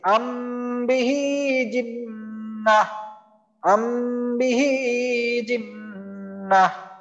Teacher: আরেকটা উদাহরণ দেখি, এই যে এটা আম বিহি জিন্না, এখানে দেখেন মিম সাকিনের পর বা আসছে, তো এই জন্য আমি মিম সাকিনকে গুন্না করে পড়তেছি।